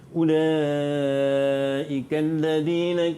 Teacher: Mad wajib muttasil. Panjangnya 5 harakat.